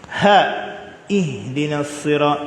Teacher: Angin yang sedikit pada makhrajnya. Itu ha. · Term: alhams